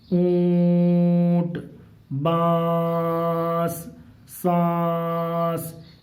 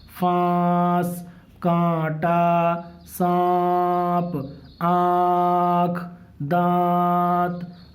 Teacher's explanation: سانس کی آواز میں ہم ناک میں آواز لے جا رہے ہیں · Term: نون غنہ